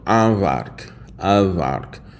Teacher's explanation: with the nasalization on the A, and then you're just getting a straight up normal V without any nasalization.